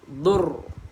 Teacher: Matikan dengan huruf ra sahaja. Okey, bagi ada getaran.